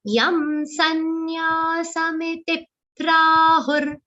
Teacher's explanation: there in sanyasa, ya is the only long sound. Miti, you have to ensure that that is kept short.